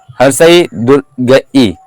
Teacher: तालु से बोला जाता है हर्ष ई और दीर्घ ई